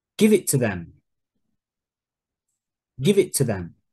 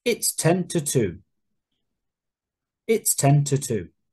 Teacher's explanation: the to becomes very weak. So to is usually weak and not stressed.